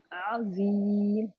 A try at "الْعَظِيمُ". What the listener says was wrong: زیم نہیں، زیم. ذا موٹا بھی پیچھے سے زبان کی جڑ اٹھی ہوئی ہو اور ذا.